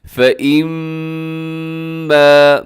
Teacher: میم مشدد ہے، یہاں پر آپ نے غنہ کرنا ہے اور اس کو لمبا کرنا ہے کیونکہ الف بھی ساتھ ہے۔ فَإِمَّا يَأْتِيَنَّكُمْ، یہاں پر بھی نون